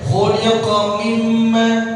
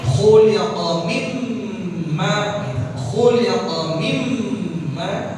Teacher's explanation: mim tuh ditahan ya ghunna ditahan